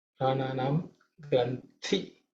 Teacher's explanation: This thi is the second letter in the Thavarga, so it has to be aspirated.